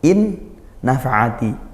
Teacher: In nafa'ati, in satu kalimat, nafa'ati, nun sukun bertemu nun, seperti itu. Ini idgham bi gunnah, masuk dan disertai dengan dengung. In nafa'ati, nafa'ati, hati-hati ain, sempurnakan pelafalannya, makhrajnya di tengah tenggorokan.